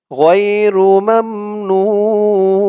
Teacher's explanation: ওয়াও পেশ নু গাইরু মামনু নুন দুই জের নিন গাইরু মামনুন ওকফা করার কারণে তিন আলিফ টান হয়েছে পেশের পরে ওয়াও সাকিন এক আলিফ টানটা তিন আলিফ হয়ে গেছে